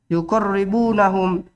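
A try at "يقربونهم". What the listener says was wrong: Yuqarribuhum. Enggak ada nunnya dia tuh.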